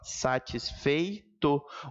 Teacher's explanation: O E não separa do I, gente. Quando isso acontece, o nome é ditongo.